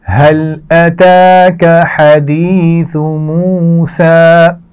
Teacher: سین کی آواز میں سیٹی ہوگی اور کھینچ کر پڑھا جائے گا